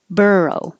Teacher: bur is the stressed syllable